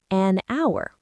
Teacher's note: Because the h is silent. The first sound you actually make is the vowel sound. So it gets an an.